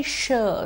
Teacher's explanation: in the sure sound the tip and the blade of the tongue moves close to the back of the teeth Ridge it's not an angular sound it's called a plateau alveolar sound